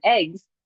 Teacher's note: I can say eggs and I can turn off my voice consciously but if I say I went to the store to buy some eggs I don't turn off my voice at the end of it · if we have that voiced sound at the end, although it's written in English like a s, you as a human do not turn off your voice